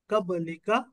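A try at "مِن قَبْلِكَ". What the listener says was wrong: नहीं, काफ को फिर खींच दिया। अब लीका। लीका। लीका।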